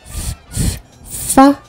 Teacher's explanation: is a fricative because you are continuously releasing air in order to produce a sound